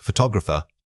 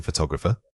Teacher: This word is much longer and the emphasis falls midway through. We want to make sure your voice naturally rises in pitch right before that stressed middle section. Don't try to give equal weight to every single syllable.